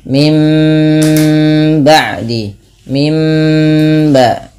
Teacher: Nah, berarti di sini dirubah bunyinya dari nun menjadi huruf mim ketika bertemu dengan huruf ba. Apabila ada nun mati bertemu dengan ba, suara nunnya dirubah menjadi suara mim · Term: iklab